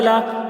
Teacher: لام کے اوپر زبر ہے، زبر کو جلدی پڑھیں، تھوڑا بھی نہ کھینچیں